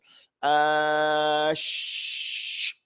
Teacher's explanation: I put the middle of my tongue with the roof of my mouth to make this thing that is called sheen.